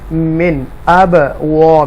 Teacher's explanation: یہاں با ساکنہ ہے اور حروف قلقلہ میں سے ہے، اب کر کے آواز آئے گی ایکو ساؤنڈ کے ساتھ